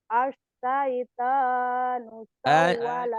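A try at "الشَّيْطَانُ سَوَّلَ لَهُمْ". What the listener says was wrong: Orang Jawa apa orang seberang ini asaitan asaiton Asyaiton.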